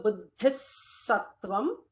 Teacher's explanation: So what happens to visarga followed by sa? It will be an extra sibilant.